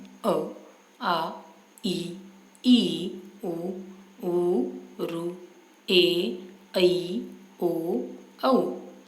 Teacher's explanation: इनका उच्चारण केवल मुंह से ही वायु बाहर निकालकर किया जाता है। नाक का रास्ता पूरी तरह बंद रहता है। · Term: परंपरागत स्वर